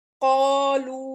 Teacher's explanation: अलिफ शिबे मुस्तालिया है, मद्दा भी है, मोटा भी पढ़ा जा रहा है और फिंगर स्ट्रेच भी हो रहा है